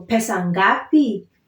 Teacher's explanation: I'm trying to stress on the last syllable because it's a question